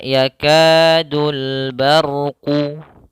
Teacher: ada huruf ra yang didahului dengan huruf ba. Maka lafalnya ra di sini harus tebal. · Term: ra-nya tebal